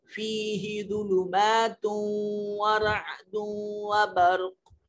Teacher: تا کے اوپر تنوین ہے، اس کے بعد واو ہے، اس کو ملا کر پڑھیں گے